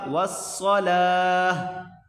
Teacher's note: وقف کی صورت میں پڑھیں گے، اس گول تا کو وقف کی صورت میں پڑھا جائے گا، والصلاة۔ یہ گول تا وقف کی صورت میں ہاں میں کنورٹ ہو جائے گا